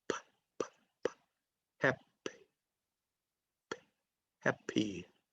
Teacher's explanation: The P sound in happy. It is unvoiced.